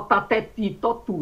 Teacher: Nordestino fala tateti totu, ele fala tudo dental. Então, a pessoa tem uma mania de o T, que é dental, titi.